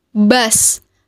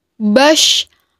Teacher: Yang membedakan antara shin dan shot adalah suaranya menebal saat kita melafalkan huruf shot.